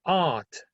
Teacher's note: British English speakers, they omit the R. So that means that it's not rhotic. When we use this word rhotic, is that the R is pronounced.